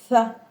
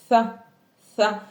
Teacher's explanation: Donc on sort un peu le bout de la langue. Donc c'est ce qu'on appelle taraf lisan, le bout de la langue.